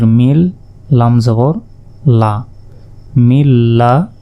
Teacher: কাকে ধরবে এই মিম গিয়ে সরাসরি লাম কে ধরবে আর নুন সাকিনের পর লাম অক্ষরটি এসেছে তাই এখানে গুন্না ছাড়া মিলিয়ে পড়তে হবে